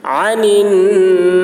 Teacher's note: باریکی کے ساتھ یومئذ عن النعیم عین کو حلق سے اور نون مشدد ہے غنہ ہوگا